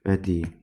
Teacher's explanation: Bədii sözündə sözün sonundakı i saiti uzanır. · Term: Uzanma